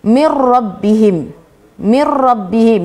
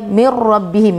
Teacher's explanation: Dia tak ada mir rabbihim, tak ada. Dia mir rabbihim, masukkan tapi tak ada dengung. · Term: idgham bila gunnah